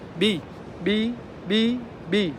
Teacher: when you say the word b b b b no the paper doesn't move